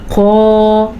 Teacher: ये जो क़ाफ़ है 2 नुक्तों वाला क़ाफ़, ये मोटा पढ़ा जाता है और पुर पढ़ा जाता है